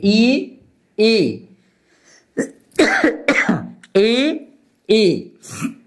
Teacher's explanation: ई ई म्हणताना आपल्या जिभेचा शेंडा थोडासा वर उचलला जातो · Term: अग्रस्वर